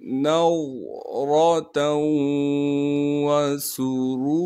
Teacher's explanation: تا کو واو سے ملائیں گے غنہ کے ساتھ